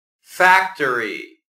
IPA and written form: ˈfæk.tɚ.i (factory)